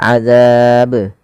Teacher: Maka ketika kita membaca ba yang disukunkan, maka ia harus dipantulkan. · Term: qalqalah